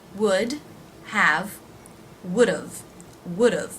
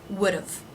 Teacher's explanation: it's the first syllable, would've, that is stressed, and d've is short and low in pitch and volume